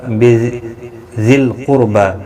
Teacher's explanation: را ساکن سے پہلے پیش ہے، را بھی پر پڑا جائے گا